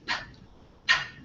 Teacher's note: when we say p our lips stop the air right they stop at our lips